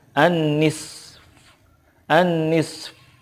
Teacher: fa-nya juga disukunkan, tetapi suara fa itu tidak zuhir banget gitu. Hanya sedikit saja.